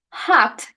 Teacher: hot is a low back vowel because the tongue is low and towards the back of the mouth